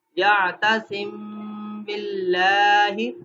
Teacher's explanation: یا تاسم، یہاں پہ دیکھیں میم ساکن جزم والا آ گیا اور آگے حرف با آ گیا تو غنہ کریں گے، یا تاسم باللہ، لام کو موٹا نہیں کریں گے، باریک پڑھیں گے کیونکہ زیر ہے لام جلالہ سے پہلے